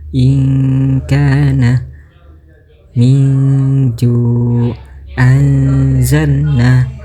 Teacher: Maka cara bacanya bunyi nun atau tanwin tetap dibaca, namun terdengar samar antara bacaan idhar dengan idgham. Kemudian disambungkan dengan huruf ifa seperti contoh inana min anzalna.